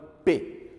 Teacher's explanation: o lugar onde o ar para e depois ele segue é os dois lábios